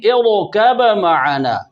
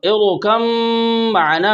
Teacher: متجانسین با اور میم دونوں کا تعلق ایک مخرج سے ہے، تام با میم میں پورا داخل ہو رہا ہے